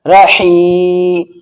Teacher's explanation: را کے اوپر زبر ہے تو را موٹا پڑھا جائے گا